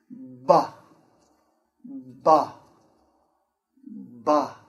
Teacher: So first we stop the air behind our lips. Our lips are closed. We stop the air. And then we open our lips and release the air. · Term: the B sound